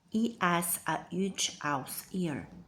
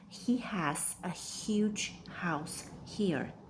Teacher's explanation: Feel the slight tightening in your throat for every H. That's your vocal cords creating friction. · Vocal cord constriction creates friction. H is clear.